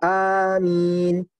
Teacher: dibaca alifnya dipanjangkan dan diringankan mimnya